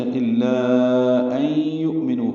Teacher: یؤمنوا میں حمزہ ساکن جھٹکے سے ادا ہوگا